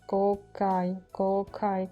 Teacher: Как будто и К есть, как будто и Г есть. Что-то такое среднее для меня так звучит.